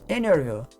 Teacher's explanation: T depois de um n você não pronuncia o t · não pronuncia o t tá entrevista em vez de falar interview você vai ouvir muita gente falando interview vai omitir o t depois do n